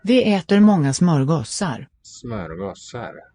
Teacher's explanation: The S sounds long here